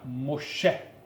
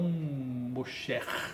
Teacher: O Re final ele perde o som. Quando houver a palavra terminada, ó, quando uma palavra termina com uma gutural forte, Re, Het ou Ain, embora seja mudo, ele é classificado como gutural, mais forte que o Aleph.